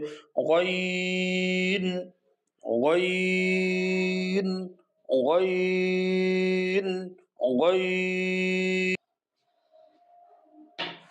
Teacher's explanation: আইন, হলকের মধ্যখান হইতে গলাকে চাপিয়ে চার আলিফ টেনে পড়তে হবে আইন, আইন। হলকের শেষ হইতে চার আলিফ টেনে পড়তে হবে